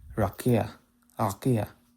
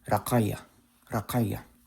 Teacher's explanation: It's an emphatic K. It's like the qaf that exists in Arabic.